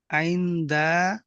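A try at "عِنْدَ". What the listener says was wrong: হুম আপনি বানান করলেন আইন নুন জের আইন, আবার পড়ছেন আইন্দা, আইন নুন জের ইন, দাল জবর দা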